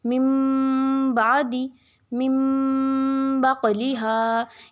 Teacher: یعنی آپ کے جب غنہ کریں گے تو نون نہیں میم کی آواز آئے گی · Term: اقلاب